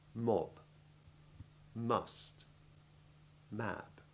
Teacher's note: you press your lips together and inwards making the humming noise